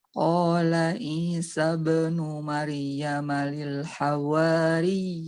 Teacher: agak ditekan sedikit di ya yang tasydid itu karena kalau enggak ditekan biasanya itu seperti madud tabi'i lil hawari seperti ya-nya mati.